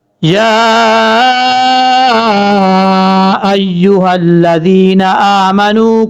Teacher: یا کھڑا زبر یا، اب یہاں پر یا کے اوپر یہ جو مد ہے اس مد کو مد منفصل کہا جاتا ہے، 2.5 سے 3 الف کے برابر آپ اس کو لمبا کریں گے۔ یا کھڑا زبر یا، حمزہ یا زبر آئی، یا پہ یو، ایو، ہا لام زبر حل، لام زبر لا، حلا، لال یا ذی، نون زبر نا، ذینا۔